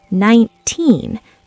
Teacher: The teen part is loud and long. The nine is fast. · For teen numbers like 13 or 19, the [music] spotlight is at the end. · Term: word stress